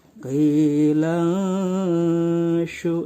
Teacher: ketika kita membaca nun an, lidah kita tidak menempel tapi ditahan, maka akan terdengar seperti eng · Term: ikhfa